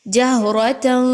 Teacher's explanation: جہرۃ، ہا کو اچھے سے اس کے مخرج سے نکالیے، را کے اوپر زبر ہے، اس را کو بھی پر پڑھیے۔ تنوین کے بعد یعنی تا کے اوپر جو 2 زبر ہے اس کو تنوین کہتے ہیں۔